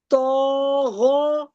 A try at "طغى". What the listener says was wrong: تو غا نہیں، تو کو مت کھینچے، غین کو کھینچے. تو غا. تو غا.